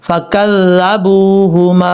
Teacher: با کے بعد واو ہے مدہ، اس کو لمبا کریں گے